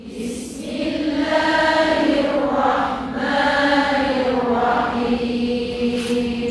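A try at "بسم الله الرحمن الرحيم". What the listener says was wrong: Sikit lagi tekan. Syaddah tu makna dia tekan.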